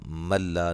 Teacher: نون ساکن کا ادغام لیکن بلا غنہ، غنہ نہیں کریں گے